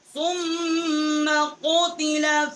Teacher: ثم سا کو میم کے ساتھ مشدد کیا اور یہاں غنہ کیا